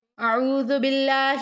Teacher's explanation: اگر اللہ کے لام سے پہلے حرف کے نیچے زیر ہو تو اس میں جلالت اللہ کے لام کو باریک پڑھیں گے